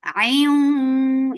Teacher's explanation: Idgham with gunna, so keep the sound in your nose for a longer time. Ayun. For fatha upon jaws, the makhraj of waw is circling your lips.